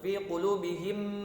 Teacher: Sadulang untuk fi qulubihim, mim sukun ketemu huruf mim tasydid, maka hukumnya adalah idgham mimi atau idgham mutamatsilain